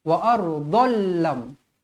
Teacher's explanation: Huruf lam dan huruf ra adalah huruf idgham bila gunnah. Jadi jangan dengungkan dia, memasukkan tanpa dengung.